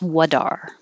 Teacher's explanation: This T will change to a D because it's between 2 vowels.